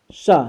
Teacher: सा जिसे हम खष्टी सा के नाम से जानते हैं, इसका सही नाम मूर्धन्य सा है, क्योंकि इसका उच्चारण स्थान होता है मूर्धा से